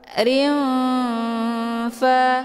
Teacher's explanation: Jadi nun dengan fa makhrajnya itu tidak begitu dekat juga tidak begitu jauh. Cara bacanya, tanwinnya disamarkan kemudian siap-siap menuju ke huruf fa. · Hukum bacaan ikhfa awsat dibacanya juga sambil didengungkan.